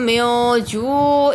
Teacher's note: نون ساکن کے بعد جیم آ رہا ہے حرف اخفا میں سے تو غنہ کریں گے، اخفا ہو رہا ہے۔ جو پر واو مدہ ہو رہا ہے، واو ساکن سے پہلے پیش ہے۔